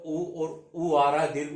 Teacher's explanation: इनमें होठ जो है वो क्या हो रहे हैं? गोले हो रहे हैं। उनका उच्चारण करें तो गोल हो रहे हैं, इसलिए ये मूर्धा में ना आकर किस में जाएंगे? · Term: ओष्ठ